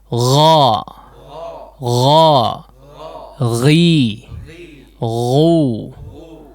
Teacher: Tapi ada rakhawah di situ yang disebut dengan rakhawah, udara yang mengalir. Meskipun ada keresek-keresek ya, tertahan sedikit tapi udara tetap mengalir.